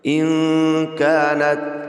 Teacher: نون ساکن کے بعد حروف اقوا میں سے کاف آ رہا ہے، لہذا یہاں غنہ کر کے پڑھیں گے